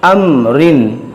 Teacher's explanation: یہاں پر اظہار شفوی ہوگا، یعنی یہاں پر غنہ نہیں کریں گے